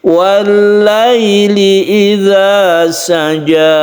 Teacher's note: Wallaili ini kita lemaskan karena layyin, sukun ya sebelumnya ada fathah. Wallaili idza saja, lemas menuju i.